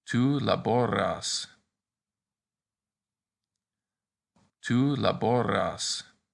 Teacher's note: the vowel before the S in the to form is almost always long, just like the U in tu is long